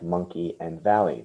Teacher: the y at the end making the long e sound